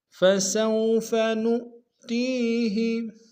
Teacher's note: فسوف میں سین کو واو کے سامنے لیں گے، واو لین بغیر کھینچے پڑیں گے ، نؤ میں حمزہ کو نون کو حمزہ کے سامنے لیں